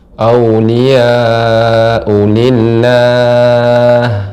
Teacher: Ketika berhenti pada lafaz Allah, ya, ini dipanjangkan mad arid lis-sukun.